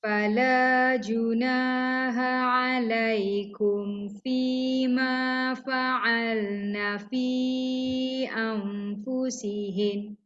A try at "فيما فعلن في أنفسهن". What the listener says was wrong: Berhenti dekat anfusihin tu boleh. Tapi cara berhenti tu jangan stop mengejut macam tu. Sebab dia tak ada, dia bukan mati, dia sabdu. Fi anfusihin. Dengung.